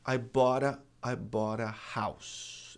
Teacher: Porque são duas palavras separadas, distintas. Então, a gente pode transformar o T, mutar o T para RE.